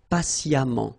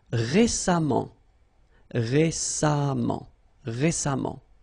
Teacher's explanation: even if you write it EMMENT, phonetically it goes like amant, patiemment.